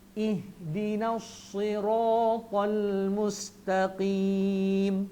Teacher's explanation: Sad tebal, ra tebal, ta tebal, sirata, semua tebal. Maka dimuncungkan mulut ke depan sikit.